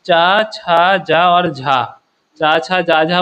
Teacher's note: जब जीभ आपकी ऊपर तालू में लग रही है तो स्पर्श संघर्षी है। ठीक है, मतलब स्पर्श हो रहा है, संघर्ष भी हो रहा है, तो इस तरीके के व्यंजन होगा ये। · च छ ज और झ ठीक है ये स्पर्श संघर्षी है